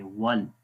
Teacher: तो उसका आंसर ये है कि जब मद्दा लेटर आते हैं और अगर मद्दा लेटर के बाद नेक्स्ट लेटर जो होता है उसके ऊपर कनेक्टिंग साइन आ जाए, जैसे जज़म या शद, तो फिर वो मद्दा लेटर नहीं पढ़ेंगे, फिर डायरेक्ट मिलाएंगे वल, फिर वो स्किप हो जाता है मद्दा लेटर